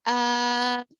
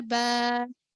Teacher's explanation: الف سے پہلے زبر ہو تو اس کو تھوڑا کھینچیں گے. ٹھیک ہے، تھوڑا کھینچیں گے یعنی 2 حرکتوں کے برابر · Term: مدہ